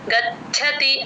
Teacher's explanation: గాలి బయటికి వదిలితేనే చ కింద చ వత్తు వినిపిస్తుంది